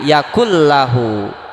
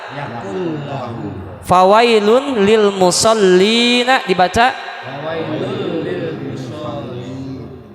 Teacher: Contoh di sini yakun lahu dibaca nah gitu, yakul lahu. Jadi bunyinya nun masuk ke huruf lam. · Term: Idgham bila gunnah